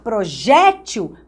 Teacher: Porque se você pronunciar projétil, você está acentuando a penúltima sílaba. Então, você está fazendo dessa palavra uma paroxítona.